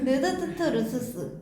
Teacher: 이빨 바로 뒤에서 부딪히면서 나죠? 목구멍 소리라고도 해요.